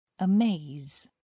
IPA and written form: əˈmeɪz (amaze)